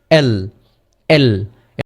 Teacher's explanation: আমাদের জিহ্বার যে আগাটা রয়েছে এটি হচ্ছে আমাদের দন্তমূলের ওই জায়গায় গিয়ে থেমে যাবে